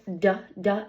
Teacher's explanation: Uh then we have du duh as in dot. I say that by putting my tongue on the ridge behind my top teeth. Uh the manner of articulation is that it again stops airflow and it is a voice sound because my vocal cords are vibrating.